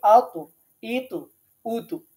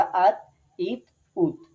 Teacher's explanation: কলকলা হরফটা এরকম কিছুটা ফিরে আসবে, অর্থাৎ ইকো হবে, প্রতিধ্বনি হবে। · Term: কলকলার হরফ